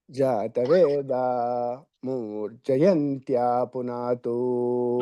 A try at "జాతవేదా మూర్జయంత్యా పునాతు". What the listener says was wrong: నాకు మూ అన్నట్టుగా వినపడుతున్నది సారు. జాతవేద మో